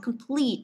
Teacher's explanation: trọng âm của chúng ta sẽ nhấn vào âm thứ hai